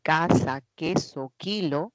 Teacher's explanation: Y en la zona velar se produce, aquí está el sordo, una K de casa, queso, kilo